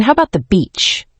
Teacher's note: That rising intonation makes it sound like a friendly question.